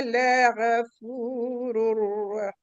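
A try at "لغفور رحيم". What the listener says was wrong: Go-nya agak dibulatkan sedikit. La ghafurur rahim. Mulut membaca go, huruf go.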